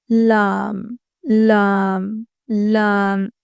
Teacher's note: لام زبان کا کنارہ اور زبان کی کروٹ کا کچھ حصہ جب دائیں جانب اوپر کے دانتوں اور ایک داڑھ کے مسوڑوں سے لگے تو لام ادا ہوتا ہے